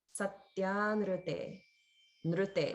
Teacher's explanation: just keep in mind that this ru is a vowel, not the RU combination. So there's no holding on the in because it's just the one sound plus a vowel.